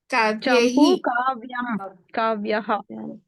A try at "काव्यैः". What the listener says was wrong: आई की मात्रा क्लियर है। आई की मात्रा